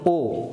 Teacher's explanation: ও যখন আমরা উচ্চারণ করি তখন হচ্ছে আমাদের জিহ্বার অবস্থা থাকে পশ্চাৎ ভাগে